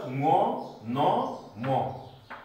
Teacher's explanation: यी अक्षरहरू उच्चारण गर्दा धेरै श्वास प्रवाह नाकबाट हुने भएकोले यिनीहरूलाई नासिक्य वर्ण भनेर भनिन्छ।